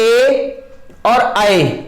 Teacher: तो आप लोग देख रहे हैं जब ए और ए दोनों को बोल रहे हैं तो कंठ से आवाज निकल रही है और आपकी जीभ तालु की तरफ भाग रही है, इसलिए ये 2 चीजों से मिलकर बने होते हैं कंठ तालव्य, कंठ तालव्य, कंठ तालव्य।